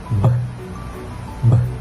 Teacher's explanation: the lips come together and close completely to block the airflow. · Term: bilabial